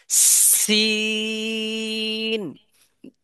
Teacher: এইটার এটা সেম একই জায়গাতে উচ্চারণ হবে। জিহ্বার আগা, সামনের নিচের দুই দাঁতের পেটের সঙ্গে লাগবে, মাঝে যে অংশটা ওই পেটের জায়গায়। সঙ্গে। হ্যাঁ মাঝের, পেট বলতে বোঝাচ্ছে কি মাঝের অংশ থেকে।